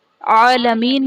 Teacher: حرف مدہ کے بعد عارضی سکون یعنی وقف کی وجہ سے ہم نون کو ساکن کریں گے تو یہاں پر مد عارض کا قاعدہ ہوگا۔